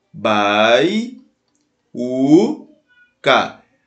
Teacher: Penúltima sílaba é mais forte, é o U, ó. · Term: paroxítona